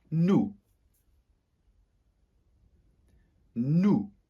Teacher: Not pronouncing that last letter S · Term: liaison